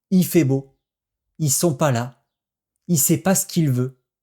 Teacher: le il devient i